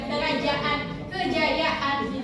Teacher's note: seolah-olah ada jeda antara dua a